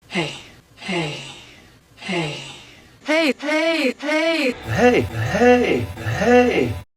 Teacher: the tongue moves up in the mouth and is closer to the roof of the mouth as a result the corners of your lips can also kind of move upwards as if you're going to smile hey hey hey hey hey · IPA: [eɪ]